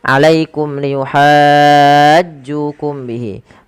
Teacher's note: mim mati yang pertama kita perjelas karena dia ada izhar syafawi yang dimana suara mimnya harus diperjelas.